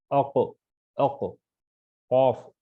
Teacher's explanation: جیسا کہ اق، اق کہہ رہے ہیں آپ، تو یہ قاف میں خے میں فرق یہ ہے، اس کے وقت آواز میں کھرکھراہٹ رہتی ہے خے میں، قاف کے وقت آواز میں کھرکھراہٹ نہیں رہتی · اس کی آواز ڈبل نکلتی ہے اگر اس پہ جزم ہو تو، ساکن اگر ہو تو